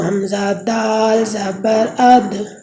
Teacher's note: جی آگے دال ہے، تو دال کا مخرج اور تا کا مخرج بالکل ایک جیسا ہی ہے۔ اس میں بھی زبان کی نوک جب اوپر کے اگلے دونوں دانتوں کی جڑ کی طرف والے آدھے حصے سے لگے گی تو اس سے دال ادا ہوگی